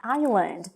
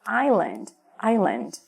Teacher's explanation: Acontece que a gente não pronuncia esse S dessas palavras. O S aqui vai ser mudo.